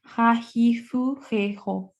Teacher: La H, que es una J aspirada nuestra suave andaluza